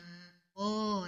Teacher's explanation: قاف کو پر کریں گے